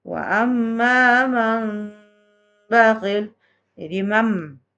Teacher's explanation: Apabila nun mati atau tanwin bertemu dengan huruf iklab, yaitu contohnya huruf mim, nun mati bertemu dengan ba, menjadi huruf mim dia bunyinya. Apabila bertemu dengan huruf ba, maka bunyinya menjadi bunyi m.